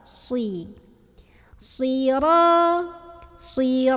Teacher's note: Tempat keluarnya sama ya, sin dan shad itu ujung lidahnya nempel di antara gigi seri bawah. Tapi shad tebal.